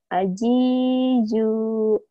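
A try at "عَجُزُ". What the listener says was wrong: Yang pertama keras, yang ujungnya rapuh. Aji zu gitu. Masih aji ju sama. Saya mau ke Jakarta, Jatinegara, Persija, Jaja. Ganti sama Zai. Saya mau ke Jatinegara, naik Bazai. Ke Jatinegara, nonton Persija, Za.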